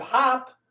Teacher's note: we would just have the short o sound always say ah